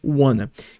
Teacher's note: Quando a gente fala bem rápido, a gente junta e faz wanna.